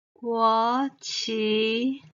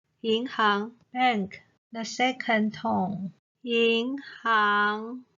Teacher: the second tone the pitch will go up